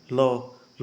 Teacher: लौ पार्श्विक है, जिसके उच्चारण में हवा जीभ के पार्श्व के बगल से निकल जाती है, यानी आपकी जीभ कुछ इस प्रकार से बेंड होगी, आप लौ बोलेंगे तो ऊपर तालू में लौ लौ बोलेंगे, और आपकी हवा जो है दोस्तों इधर से निकल जाएगी ऐसे, तो इसे बोला जाता है पार्श्विक।